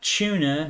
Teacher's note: Uh, tuna ch u n a starts with a t, but for some reason let's turn it into a ch sound